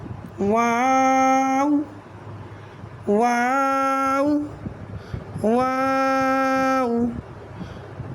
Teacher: واو ادا ہوتا ہے ہمارے ہونٹوں کی ناتمام گولائی سے